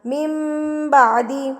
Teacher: آپ نے اس کو میم کو پڑھنا ہے، نون کو نہیں پڑھنا